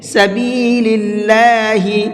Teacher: اللہ کے لام کو باریک کر کے پڑھیں گے، منہ بھر کے نہیں پڑھیں گے۔ سبیل اللہ نہیں پڑھنا ہے بلکہ سبیل اللہ، اس لیے کہ یہاں پر اللہ کے لام سے پہلے زیر ہے، اور اللہ کے لام سے پہلے زیر ہوتا ہے تو اس اللہ کے لام کو باریک کر کے پڑھتے ہیں۔